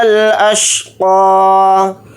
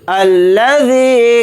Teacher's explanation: ذال کے ساتھ یا مدہ ہے، ذال یا زیر ذی کو تھوڑا کھینچ کر پڑھیں گے. یہاں پر قاف کو ذال کے ساتھ ملا کر پڑھیں گے.